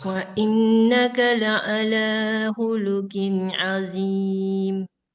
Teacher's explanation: lanya panjang, 2 harkat